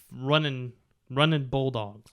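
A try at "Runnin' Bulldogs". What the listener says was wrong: It's like Raging Cajuns. Running Bulldogs, Raging Cajuns. No G on the end of it.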